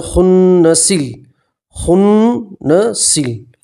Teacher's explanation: الف نہیں پڑھیں گے، ملا کر پڑھیں گے تو سین کو سیدھا لام سے ملائیں گے اور الف نہیں پڑھیں گے